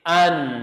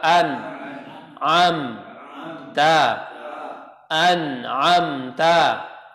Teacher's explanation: nun dan mim itu punya sifat, namanya sifat bainiyah tawassut, yang harus dibaca, harus dialirkan sedang suaranya, nggak boleh ditahan.